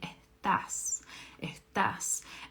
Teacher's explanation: in Argentina, they don't really pronounce that S very strong